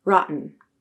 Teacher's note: And rotten used a glottal stop.